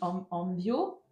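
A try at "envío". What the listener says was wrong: Alors, attention à la prononciation. Nos envio. Porque la acentuación está sobre la O.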